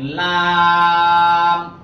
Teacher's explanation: জিব্বার মাঝখান থেকে আগার দিকে হবে লাম